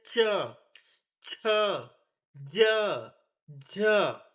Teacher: जिस व्यंजन का उच्चारण मेरे प्यारे साथियों तालु यानी कि मुंह की जो छत होता है उससे होता है उसे हम तालव्य व्यंजन कहते हैं